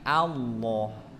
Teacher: Jadi lidahnya, lidah pangkal lidah atau lidah bagian belakang itu terangkat seperti sendok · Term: lafal Allah, lafzul jalalah